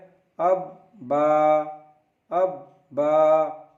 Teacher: बा दोनों होठों के तर हिस्से से उच्चारण होता है. बा is pronounced from the वेट part of both lips.